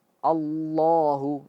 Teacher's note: Kalimat Allah tebal. Ketika berharakat ee fathah Allahu, itu ikut ikut tebal.